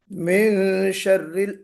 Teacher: من شر یہاں پہ جو غنہ ہے یہ غنہ جو ہے آپ کا اخفا والا غنہ ہوگا